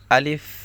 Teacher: শেষে হালকা একটু মুখ থেকে বাতাস বের হবে